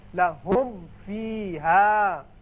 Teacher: لہم فیہا، لہم فیہا، یعنی آسان طریقہ ہے کہ آپ ہونٹوں کو ملائیں جب میم ادا کریں، ملا کے پھر آپ فا ادا کیجئے، ہونٹ ملے تو میم ادا ہوا، اور فا کا جو مخرج ہے وہ ہے اوپر والے جو دانت ہیں وہ نیچے ہونٹ سے لگیں گے، تب فا ادا ہوگا۔